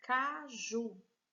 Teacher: oxítona nós temos aqui a palavra caju vamos separar o caju vejo que o ju é a sílaba mais forte · Veja que o ju é a sílaba mais forte. Se é a última sílaba, nós temos então uma palavra oxítona.